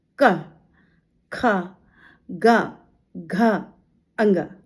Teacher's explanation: आप बोल के देखिए क ख ग घ अङ यानी का हवा गई और फिर जीभ ऊपर की तरफ लगी का यानी ज कहीं पर हमारी तालु में कहीं पर हमने वायु का स्पर्श कहीं पर कोई अवयव मुख के अंदर स्पर्श हुआ और फिर झटके से बाहर निकली। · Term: स्पर्श व्यंजन